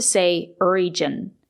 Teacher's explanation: We have to say region with a J sound, like in juice and jump.